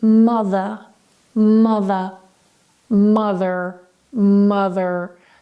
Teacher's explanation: in non-rhotic accents, like British English ones, the R tends to be silent if it is after a vowel or towards the end of a word